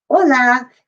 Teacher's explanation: the real h in spanish makes no sound it's silent